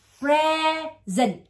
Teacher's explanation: Rồi bây giờ present, tại sao nó ra âm dình? Chữ s này khi nó đứng giữa hai cái nguyên âm á, nó bị nhão ra, nó thành âm giờ